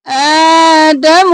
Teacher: آ کو کھینچیں گے دم کو جلدی سے